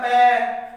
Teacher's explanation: बिना होठों के टच किए हम पै नहीं बोल सकते, जैसे पै आवाज नहीं निकलती ना पै की, अगर टच होंगे तो पै का शुद्ध उच्चारण होगा।